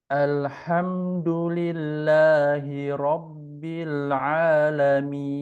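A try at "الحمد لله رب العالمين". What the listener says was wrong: Masya Allah gitu. Baik.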